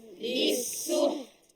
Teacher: dia tak boleh laju ta tu sebab ha tu mati dulu. Lepas tu kena ada tertahan suara pada ta tu. Dia suara kita stop pada ta. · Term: ta mati